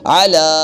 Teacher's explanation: کھڑی زبر ہے تو الف مدہ کی قائم مقام یہ ہے، ایک الف کی مقدار لمبا کریں گے کھڑی زبر کی وجہ سے